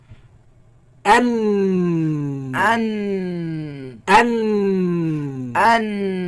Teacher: the tongue moved up a bit, away from the roots of the teeth. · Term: Noon